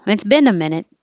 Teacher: in this case, they put the stress on been.